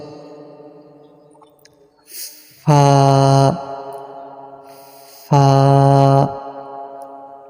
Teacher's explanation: নিচের ঠোঁটের পেট সামনের উপরের দুই দাঁতের আগার সঙ্গে লাগাইয়া একটি হরফ উচ্চারিত হয়